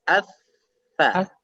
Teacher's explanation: Jadi bukan di dalam tapi sedikit keluar. Ujung lidah mengenai ujung dua gigi seri yang atas. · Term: huruf tha